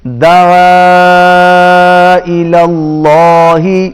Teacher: دعا کے اوپر مد ہے، کھینچ کے پڑھیں گے۔